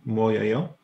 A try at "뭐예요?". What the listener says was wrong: Don't try to pronounce 뭐 too precisely. 뭐예요?